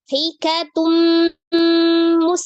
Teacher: tanwin ketemu dengan mim, idgham bi gunnah. Maka diidghamkan ke huruf mim. Hikatun jadi hikatum.